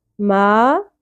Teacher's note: ما مد اصلی ہے الف، ایک الف کے برابر کھینچیں گے